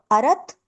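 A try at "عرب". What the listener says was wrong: त नहीं है, त नहीं है। अरब अरब।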